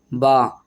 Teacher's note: ब में दोनों होठ मिलेंगे और ऐसे ही ऊपर को उठ जाएंगे